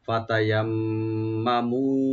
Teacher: ফাতায়াম্মামু, ফাতায়া, তিনটা ওপেন করে পড়বো। আর মাঝখানে যে তাজদিদ ওয়ালা মিম আছে, এখানে আমরা একটু গুণনা করব, টানবো না। আর লাস্টে মিমে খালি টান হবে।